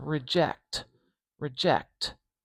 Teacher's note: It really has to do with how the air flows through the mouth. So we've got k and t, where we stop the air in our mouth and then let the air explode out of our mouth